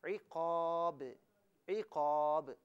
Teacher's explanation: با کو جنبش کے ساتھ ادا کیا جائے گا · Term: قلقلہ